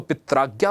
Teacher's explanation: ठीक उसी प्रकार पितृ आज्ञा में री अंत में, यहां देखो लास्ट में री है, आगे आ है, जब इसे आप आपस में तेज बोलने का प्रयास करोगे तो री अ मिलकर के एक र स्वर को उत्पन्न कर देगा